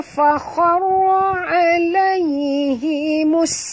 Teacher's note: Dan kena ingat, bila ada tajdid maknanya ada dua sin. Jadi kena bunyikanlah safir pada sin